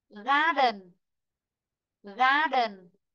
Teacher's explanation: Vì vậy là trọng âm sẽ rơi vị trí thứ nhất